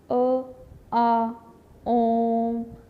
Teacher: अ में कम समय लग रहा है, आ में अ से ज़्यादा समय लग रहा है और आ से भी ज़्यादा समय हमें ओम का उच्चारण करने में लग रहा है। लंबा खींचना पड़ता है इसको, इसलिए ये क्या है, प्लुत स्वर है और इसका प्रयोग ज़्यादातर संस्कृत में श्लोक में किया जाता है।